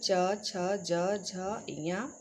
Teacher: च छ ज झ य यह तालव्य के अंतर्गत आते हैं